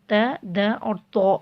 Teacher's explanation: ज़ुबान की नोक को ऊपर के दांतों की जड़ से लगाएंगे तो त, द और तो अदा होगा, जिसमें त और द बारीक हुरूफ हैं, जबकि तो मोटा और ऊंचा है।